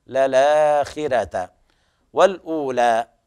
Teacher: كل القراء يقرؤون بتفخيم الراء عدا ورش فأقرأ بالترقيق